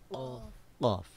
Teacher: قاف کی آواز یعنی قاف کا مخرج، زبان کی جڑ اور اس کے مقابل میں جو قوا یعنی لحات ہے اس کے ٹچ کرنے سے حرف قاف ادا ہوتا ہے، ٹھیک ہے؟ اب اس چیز کو ذہن نشین کر لیں کہ حرف قاف جو ہے وہ ہم نے زبان کی جڑ اور اس کے بالمقابل تالو کے ٹچ کرنے سے، یعنی تالو جو ہے وہ زبان کی جڑ سے ٹچ ہوگا.